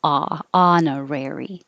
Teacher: the vowel is ah in the stressed syllable so you have to open a lot